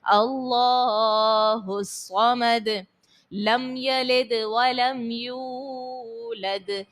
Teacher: آخر میں دال کو خوب ظاہر کرنا ہے حرف قلقلہ ساکن ہونے کی وجہ سے